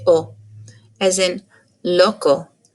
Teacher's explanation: it does not have the sound that we put at the end of oh oh we don't do that in spanish we just say o